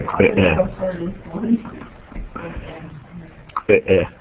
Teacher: It's got a couple of those glottal stops in it.